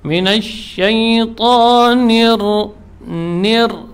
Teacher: nunnya jelas, ya, tidak boleh cenderung ke ra.